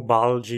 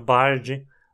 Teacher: a transformação de um l na Coda da sílaba em R